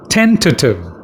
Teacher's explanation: And you stress on the first syllable, ten.